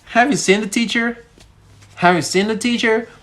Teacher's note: Now notice that the American tone goes up. It goes up like from down, from bottom to the top.